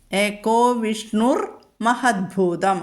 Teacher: വിസർഗം മാറിയിട്ട് അവിടെ രേഭം വന്നു രേഭത്തിനു ശേഷം വരുന്ന അക്ഷരം ചിലപ്പോ ഇരട്ടിക്കും അതുകൊണ്ടാണ് മഹത്ഭൂതം മ ഇരട്ടിച്ചത് നിങ്ങൾക്ക്